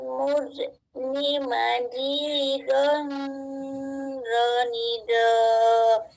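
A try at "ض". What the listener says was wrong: Nah, itu belum ini ya, belum ini tepat bacaan huruf do-nya.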